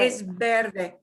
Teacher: The V will sound like a B